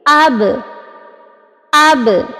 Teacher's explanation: ہم آپس میں ہونٹوں کو جوڑ رہے ہیں اور فوراً سے واپس کھول رہے ہیں، یعنی کہ ٹکرا کر واپس آ رہی ہے۔ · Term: قلقلہ